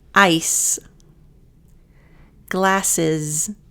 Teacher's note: The two S's, those are that S sound, but the last S sounds like a Z. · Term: Z sound